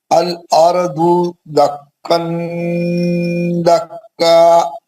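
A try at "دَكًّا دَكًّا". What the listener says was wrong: نون کا آواز نہیں آنا. دکا دکا. میرے کو آیا آواز نہیں آیا نا, میں چھپا لیا نا ناک میں. دکا دکا. تھوڑا بھی آواز نہیں آنا نون کا. منہ تھوڑا زیادہ بڑا کھولو, آواز ناک میں لے کے جاؤ.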